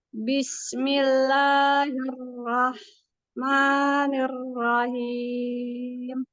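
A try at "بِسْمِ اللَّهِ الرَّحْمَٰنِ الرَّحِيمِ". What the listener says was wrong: Basmalahnya mengalir aja ya Bunda, jangan ada terjeda ya.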